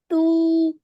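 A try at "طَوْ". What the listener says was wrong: Okay, so we have to make an ow sound. Tau. So whenever you have a waw with a sukoon and the letter before has a fatha, you make an ow sound.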